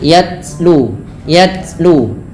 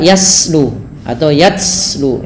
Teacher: sifat huruf ta yang paling menonjol dalam ketika dia Sukun adalah sifat syiddahnya yaitu tertahannya suara dan Langkah kedua yaitu adalah sifat hamusnya mengalirnya nafas maka ketika